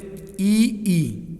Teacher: उच्चारण स्थान तालु से, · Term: तालब्य